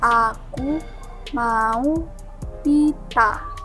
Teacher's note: Fonem A adalah vokal rendah tengah bulat. Vokal ini dibentuk dengan bagian tengah lidah agak merata dan mulut terbuka lebar.